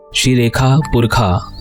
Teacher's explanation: शुक्ल यजुर्वेद में मूर्धन्य श का उच्चारण ख जैसा किया जाता है